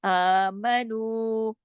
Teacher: آمنو، میم کو بیچ میں نہیں، الف کو اور نو، یہ 2 جو حرف ہیں 2 حرکت کھینچیں گے کیونکہ اس کے اوپر کھڑی زبر ہے، اس کے ساتھ واو مدہ ہے.